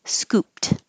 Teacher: This ed at the end sounds like a T because when the last sound in the word, if I took off the ed, the word is scoop, and p is voiceless, meaning there's no vibration.